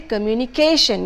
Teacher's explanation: case here stressing on the wrong syllable communication for communication so the stress should not be on tion as it is usually done because of mother tongue influence instead it should be communication your stress would be on the